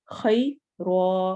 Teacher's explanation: کیونکہ یا ساکن سے پہلے زیر نہیں آ رہی، زبر آ رہی ہے اور اس کو ہم لین کہتے ہیں. خی رو، رو موٹا ہوگا کیونکہ اس پر سٹینڈنگ فتحہ ہے، کھڑی زبر ہے